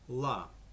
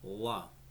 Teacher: clear L is pronounced more in the front of the mouth, where the dark L is pronounced more in the back of the mouth. For an example, a clear L would be la, where a dark L would be la.